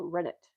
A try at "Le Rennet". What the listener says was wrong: Le Rennet. Le Rennet. The French don't pronounce the T.